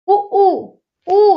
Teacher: ऊ में हमारे ओंठ गोल हो रहे हैं। ऊ यानी जिनको बोलने में ओंठ गोल हो जाए, वह व्रतमुखी होते हैं।